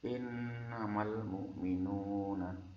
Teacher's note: adalah bacaan gunnah, ada nun bersyiddah